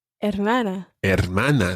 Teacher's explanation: Now you remembered that the H is silent. The H is always silent in Spanish.